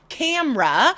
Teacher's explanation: E in the middle disappears.